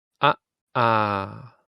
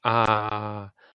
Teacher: try and make it very short as short as you can giving an uh sound the second one you say longer